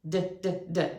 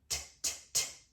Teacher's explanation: the twin of D, the unvoiced twin, is T